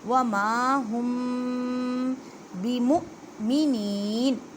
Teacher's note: الف سے پہلے زبر ہے، ہم، اب دیکھیں میم ساکن ہے، میم ساکن کے بعد با آ گئی ہے، یہاں پہ اخفاء شفوی کا قاعدہ کریں گے